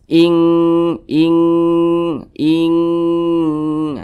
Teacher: maka ini hukumnya adalah ikhfa Hakiki ab'ad jadi cara membunyikannya itu kadar denggungnya itu dia lebih tinggi jadi lebih condong berbunyi Eng gitu ING ING ING Nah didengungkan itu dipanjangkan suaranya sebentar sejenak